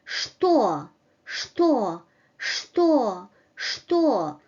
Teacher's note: In initial position, sometimes it is pronounced like sh